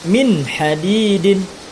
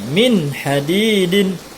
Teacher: Ya, maka hukum bacaan nun mati di sini adalah izhar. Dibaca jelas bunyi nun matinya dengan tiada berdengung.